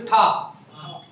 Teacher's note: जीभ अंदर जाके थोड़ा ऊपर मुड़ रही है।